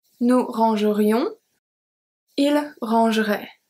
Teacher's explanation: when we have the E after the R, we tend to pronounce it a little